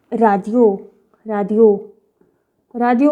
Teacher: Korean pronounce करने का तरीका है वो according to sound ही pronounce करेगा, क्योंकि कोरियन में ड साउंड है ही नहीं।